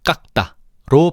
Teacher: 그래서 깎다가 아니라 깎다로 발음되는 거지. 디귿이 기억에 영향을 받아서 쌍디귿으로 교체가 되었네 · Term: 된 소리 되기